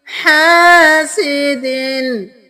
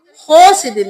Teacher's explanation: हा को गले के दरमियान से निकालेंगे